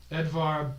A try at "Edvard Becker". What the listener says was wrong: There's a D at the end of that.